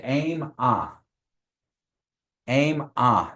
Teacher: there's a high tone on the a and then you don't say an but that n has a teal a over there which means that the a is nasalized. · Ah, you're just nasalizing that one a. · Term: nasalization